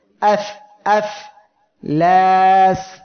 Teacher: এই যে ফা অক্ষরটি উচ্চারণের সময় দেখেন কোনো দিকে কোনো জড়তা নাই, এক কথায় কোনো জায়গায় সেটা বাধা যাচ্ছে না, সহজে উচ্চারিত হচ্ছে আর দ্রুত। ফা অক্ষরটি উচ্চারণের সময় নিচের ঠোঁটের পেট উপরের দুই দাঁতের আগার সঙ্গে লাগিয়ে উচ্চারণের সময় একদম দ্রুত উচ্চারিত হবে আর সহজে উচ্চারিত হয়ে যাবে। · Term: ইজলাক